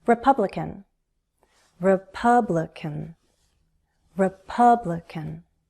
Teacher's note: Primary stress is on the second syllable.